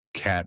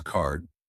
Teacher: Emphasize open jaw for cat and more back for cart.